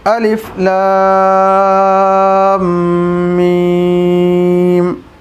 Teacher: تو لام پر مد کا نشان ہے، اسے کھینچنا ہے۔ میم پر تشدید ہے، گننا بھی کرنا ہے اور میم کو کھینچنا بھی ہے۔